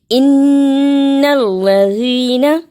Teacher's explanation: نون مشدد ہمیشہ غنہ یعنی اس کی آواز کو تھوڑی دیر ناک میں رکھنا ہے۔ ان الذین، اسے ان الذین جلدی نہیں پڑھنا، دیر لگانی ہے اور صحیح پڑھنا ہے۔